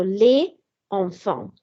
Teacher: But you would actually do a liaison here. So the S would become a Z sound because E is a vowel on the next word. And this process is called l'enchaînement, so word linking.